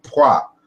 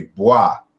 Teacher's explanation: So the P is a voiceless bilabial plosive.